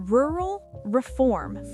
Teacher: Feel your tongue curl for rural, relax briefly, curl again for reform.